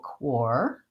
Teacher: In the word quarter, the stress is on the first syllable, quar, and we hold that long. And the second syllable, der, is short and reduced.